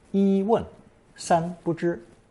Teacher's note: the number 1 is first tone 一 because it's used as a pure number, to contrast it with the other pure number 三.